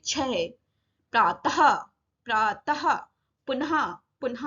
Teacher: तो विसर्ग आधे हा जैसी आवाज आती है।